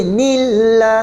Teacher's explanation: nama Allah lafzul jalal dibaca dengan nipis tarqiq